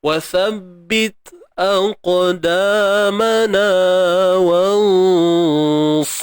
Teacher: huruf sad ni makhraj dia hujung lidah berada di belakang gigi sebelah bawah